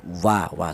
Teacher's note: huruf wawu itu dihasilkan dari kedua bibir yang renggang atau tidak rapat